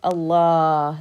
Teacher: There's a ah before you take that deep breath on the ha.